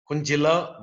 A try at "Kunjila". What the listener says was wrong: Yeah, the J is silent, but it's okay. Kunjila.